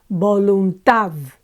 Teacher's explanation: this one ends with a consonant and it's the last syllable that's accentuated